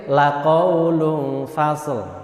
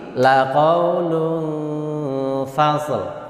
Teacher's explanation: laqaulun tanwin ketemu dengan fa, ini ikhfa, maka dia bacanya dengung